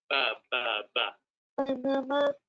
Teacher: Some of the B's will come out sounding a little bit more like an M.